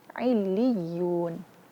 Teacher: Karena di situ ada namanya nabrah. Mengangkat sedikit suara ketika membaca tasydid.